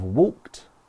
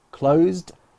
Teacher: So with walk, it ends in a t sound. With closed, it ends in a d sound.